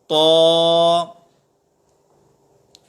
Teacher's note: طا حروف مستعلیہ میں سے ہے، ہم اسے پر پڑھیں گے تو طا کی ادائیگی درست ہوگی